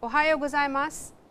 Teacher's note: There is Ohayou gozaimasu with a rising intonation here, meaning good morning.